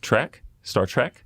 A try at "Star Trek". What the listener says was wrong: You said track.